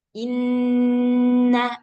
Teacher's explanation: Nah, jadi kalau nun tasdid dan mim tasdid ini memang kalau secara tertulisnya itu ulama sepakat ya mengatakan bahwa ghunahnya itu dua harta. Tapi dalam praktiknya nun tasdid dan mim tasdid ini agak sedikit lebih panjang gunahnya. Nah, jadi ditahannya lebih lama